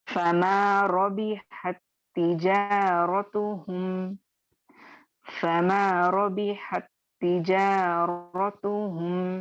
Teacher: ता साकिन ता मुशद्दद में मर्ज हो जाएगा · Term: इदगाम सगीर